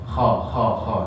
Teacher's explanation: makhrojnya di tenggorokan atas. Nggih. Jadi, rasanya di atas Pak, Bu.